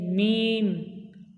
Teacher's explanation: বা দুই ঠোঁটের ভেজে অংশ হতে উচ্চারিত হয়। মিম দুই ঠোঁটের শুকনো অংশ মিলিয়ে উচ্চারিত হয়, মিলিতভাবে উচ্চারিত হয় মিম।